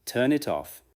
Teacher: Feel the final sound of turn moving into it, and the final sound of it moving into off. You are not changing the meaning, you are removing empty space.